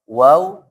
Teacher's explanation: wau kedua bibir dimonyongkan